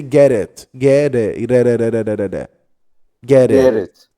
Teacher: there is a flap T here. The same t we say in water and daughter and batter.